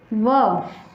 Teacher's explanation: दंत और ओष्ठ के संयोग से व बोला जाता है